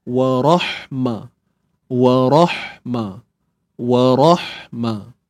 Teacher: untuk ha yang sukun ni kita kena sempitkan tengah kerongkong.